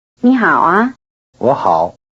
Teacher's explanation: Listen for the rising tones on: nǐ and wǒ